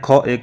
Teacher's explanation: ख क्या है स्पर्श व्यंजन भी है कंठ ध्वनि भी है अघोष भी है और महाप्राण ध्वनि भी है